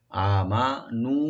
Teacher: জালটাকে right দিবেন এক আলিফ টেনে, নুনে টান নাই লাস্টে, আমানু, হামজাকে রাইট দিয়ে এক আলিফ টানবেন, মিম ওপেন থাকবে